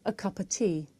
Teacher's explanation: The words a and of become schwa.